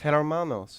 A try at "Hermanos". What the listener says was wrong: No, it's you don't even say it. You don't even say the H.